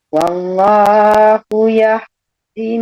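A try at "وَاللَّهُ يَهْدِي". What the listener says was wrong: Sebentar, wahdi panjang. Wa maullahu yahdi panjang.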